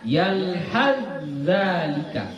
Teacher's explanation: Huruf ta tidak dibaca lagi karena sudah diidghamkan